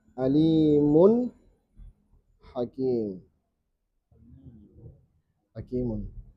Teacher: Berarti nunnya nampak ketika bertemu huruf tenggorokan. Hamzah, ha, ain, ha, ghain, kha. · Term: idhar halki